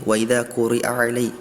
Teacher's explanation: Nanti kalau misalnya dibacakan dengan tempo yang cepat, atau tadi terdengar seperti wa idza quri'a alaihi. Jadi hamzahnya ini bergabung dengan huruf ainnya, ya.